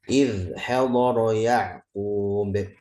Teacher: Dan ainnya lebih jelas di tengah tenggorokan